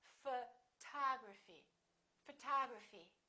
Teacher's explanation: we stress the second syllable we say photography this o also is reduced